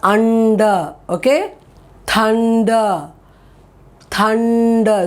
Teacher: that n sound goes to the top palette on the roof and it touches right there